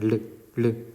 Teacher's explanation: 르 발음하면서 위로 갔다가 밑으로 내려가죠. 혀가 입천장에 붙었다가 내려갑니다. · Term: 유음